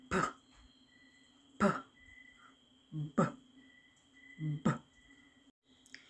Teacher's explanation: We stop the airflow and then we release it. And first, we use our lips.